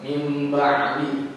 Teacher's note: Mim ba'di dibacanya sedikit dengung. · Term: iqlab